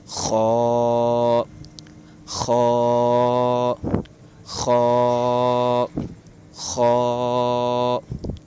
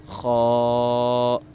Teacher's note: حروف مستعلیہ کو ہمیشہ ہر حالت میں پر. خا خا خا خا ایسے موٹا کریں گے, ہونٹوں کو تھوڑی سی گلائی میں لائیں گے